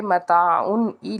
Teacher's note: یہاں پہ ہم نے غنہ نہیں کرنا کیونکہ حمزہ جو ہے وہ حرف ہلکی میں سے آ جائے گا · لام کے اوپر کھڑا زبر ہے، ایک الف کے برابر کھینچ کے ادا کریں گے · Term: اظہار